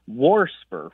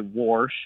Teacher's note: warsper with an extra R thrown in there